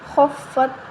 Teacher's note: خا فا زبر خف، فا تا زبر فت، خفت۔ خا حروف مستعلیہ میں سے ہے، موٹا حروف ہے، اس کو موٹا پڑھیں گے